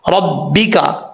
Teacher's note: रा के ऊपर ज़बर है, रापुर पढ़ा जाएगा, और बा के ऊपर शद है, जिस हर्फ के ऊपर शद हो वो दो दफ़ा पढ़ा जाता है।